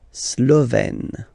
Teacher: Remember, E accent grave, you open it